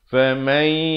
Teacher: Kemudian ibtidak pada famai, nun mati bertemu ya idgham bi gunnah. Asalnya faman, tapi bila datang ya masuk beserta dengung dua harakat.